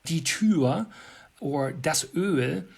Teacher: some of the texas german speakers would still round their vowels